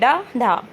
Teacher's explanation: आपको ऐसा लग रहा है कि जीभ एकदम उछल के आगे को आ रही है। जो नोक है वह मुड़ रही है जीभ के पीछे को। जब बोल रहे हैं तो जीभ जो है एक झटके से आगे की ओर फेंकी जा रही है। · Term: उत्क्षिप्त